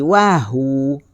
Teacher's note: Kalau berhenti, dia jadi wahu. Waw dia tak bunyi. 2 harakat kalau berhenti. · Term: mad asli kalimi